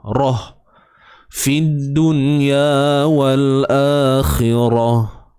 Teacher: Baik, huruf kha tebal baris bawah khi, kemudian ra tebal baris atas ra, matikan ta marbutah ni ta tertutup, marbut tertutup ataupun yang terikat. Dan kita matikan dengan bunyi ha simpul, bukan ha pedas, ha simpul.